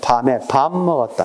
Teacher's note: 그래서 나온 것이 소리의 길이다. 따라서 앞에 밤은 까만 밤이지만 뒤에 밤은 먹는 밤이란 말이야. 그래서 먹는 밤을 길게 냅니다.